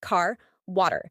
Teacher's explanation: American accents are Ric meaning that R is pronounced clearly in all positions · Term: rhotic